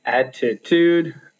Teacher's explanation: the first and the last syllable of that are stressed. The t in the middle is not stressed.